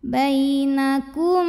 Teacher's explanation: mim sukun yang menghadapi huruf ba maka mim sukun dibaca dengung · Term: ikhfa syafawi